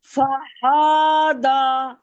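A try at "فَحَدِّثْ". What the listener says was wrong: ہاں کو کیوں کھینچا کو کیوں ہاں کو کیوں کھینچ رہی وہی تو کہہ رہا ہوں کیوں کھینچنا وہی تو وجہ پوچھ رہا ہوں کھینچنے کی وجہ کیا ہے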